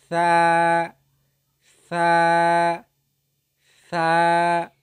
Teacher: জিহ্বার আগা উপরের দুই দাঁতের সঙ্গে লাগিয়ে উচ্চারিত হয়। জিহ্বার আগা উপরের দুই দাঁতের আগার সঙ্গে লাগিয়ে উচ্চারিত হয়